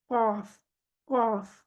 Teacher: जुबान का पिछला हिस्सा, जुबान की जड़ ऊपर के तालु की तरफ उठी हुई है, इसलिए ये हरूफ मुस्तालिया में आता है।